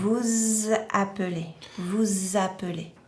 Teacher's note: we have to pronounce the S, which kind of transforms a little bit into a Z. And liaise it, link it to the second word. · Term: the liaison